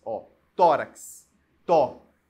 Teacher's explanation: O tó é a sílaba tônica, é a penúltima